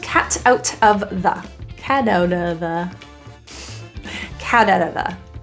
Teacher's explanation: That T is surrounded by vowels. It will be a flat T. · T, flat T, turns to a quick little D sound.